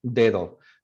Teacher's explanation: So it's an occlusive D if it comes after a pause or a nasal. After a pause or a nasal or an L.